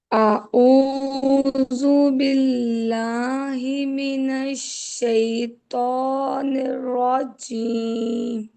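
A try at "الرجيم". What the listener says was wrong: प्यारी शहजादी चीम को जीम से पढ़े चीम को जीम से पढ़े और को जीम इसको जीम से पढ़े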